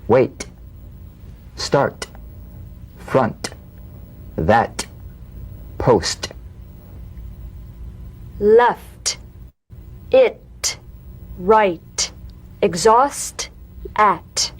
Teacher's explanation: The unvoiced T, tongue front palatal stop consonant, cognate to the D. The same staccato springing action as the D drum beat, with no voice, forms the light tap of the T. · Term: drum beat T